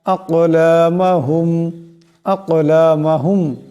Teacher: এখানে কাফ সাকিন, কাফ কলকলা হরফ, আওয়াজটিতে টক্কর খাবে।